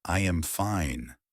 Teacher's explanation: A statement goes down like, I am fine. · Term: intonation